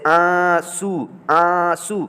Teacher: ये नौ की आवाज़ पूरे साफ नहीं निकालेंगे, बल्कि नाक ही में छुपा लेंगे, सिर्फ और सिर्फ नाक से बोलेंगे। ठीक, जैसे आंसू, आंसू, तो आंसू में नौ की आवाज़ नहीं निकल रही है, लेकिन नाक से हम लोग आंसू पढ़ रहे हैं। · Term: अन की मात्रा